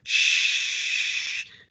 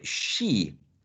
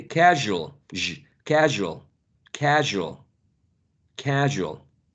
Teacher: tongue not the tip the front part of the tongue and you press the area in between the alveolar Ridge and the hard palate that's why it's called post alveolar past the alveolar Ridge